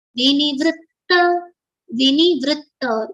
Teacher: v and ni both letters are short so we are quickly pronouncing it